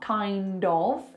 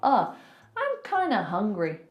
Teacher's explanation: Kinda instead of kind of. Again, we're turning that of into a schwa. So it's not kind of, it's kinda, schwa, I'm kinda hungry.